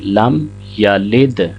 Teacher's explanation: لم یلد، یہاں پہ بعض احباب یا کو لمبا کر دیتے ہیں، لم یلد، یا کو لمبا نہیں کریں گے، یا کے اوپر زبر ہے، اس کو 1 سیکنڈ پڑھیں گے، لم یلد۔ دال جہاں پہ بھی ساکن ہوگی، چاہے وقف کی صورت میں ہو چاہے خود سے ہی ساکن ہو، اس پہ قلقلہ ضرور ہوگا۔